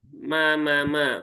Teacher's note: mimnya alif setelah fathah berarti pastikan panjang dua harakat dan ini mimnya huruf tipis ya